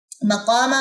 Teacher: مقامہ میں قاف لمبا ہوگا، میم لمبا نہیں ہوگا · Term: الف مدہ